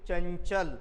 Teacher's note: चंचल म्हणल्यानंतर याचा स्पष्ट उच्चार होतो आहे अनुस्वाराचा, म्हणून हे काय तुमचं अनुस्वार आहे.